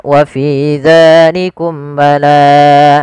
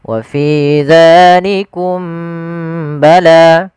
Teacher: membaca ikhfa syafawi, yaitu tidak menahan suara mimnya, harusnya ditahan. Contoh misalnya yang tidak menahan wa fi dzalikum bala.